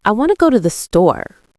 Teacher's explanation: In the sentence, I wanted to go to the store, native speakers stress the content words wanted, go, store, while rapidly compressing the function words I, to the. The sentence doesn't sound like I want to go to the store. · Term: Stress timed rhythm, stress-timed rhythm